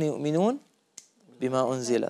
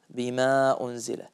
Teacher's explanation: طبعا أنا عندي بما مرققة، بما أنزل لكن غير ممالة، فلا أقول بما أنزل، يعني أنا أرقق لدرجة أني أميل الحرف، فبدل ما يكون آ يكون إي، بما ما ينبغي.